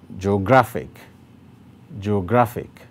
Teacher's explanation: the place with the greater emphasis is on gra that is why the stroke is placed on gra now each